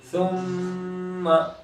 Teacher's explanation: यहाँ मीम को नहीं खींचेंगे इसलिए कि यहाँ मद्दा वगैरह नहीं है, सुम्मा सिर्फ गुन्ना करेंगे